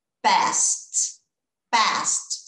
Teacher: Esse E eu não falo, o D eu não falo. O E e o D viram um T, vira som de T.